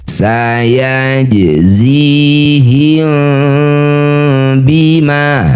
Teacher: Di tengah bacaan disebut qalqalah sugra. Pantulkan pantulannya kecil.